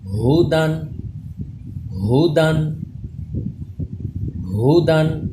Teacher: ہا حلق کے نیچے والے حصے سے اس میں سانس کی آواز بالکل مکس نہ ہو